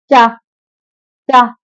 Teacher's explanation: जब आप चा बोलेंगे आपकी जीवा तालु में जाके मिलेगी। इचू ऐसा नाम तालु, ये तालु से बोले जाते हैं।